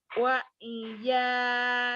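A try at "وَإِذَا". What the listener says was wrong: Jangan wa ija, wa idza. Wa idza, jangan wa ija, wa idza, wa idza. Wa idza. Wa iya, wa idza. Ibu mau jadi wa iya tadi mulutnya. Wa idza.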